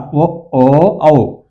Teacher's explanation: ఇవి ఈ మూడు కూడా ఓ ఓ ఔ పలికెట్టాం చూడండి ఇక్కడ కంటోస్టో కంటోస్టో అంటే కంఠము మరియు ఓష్టము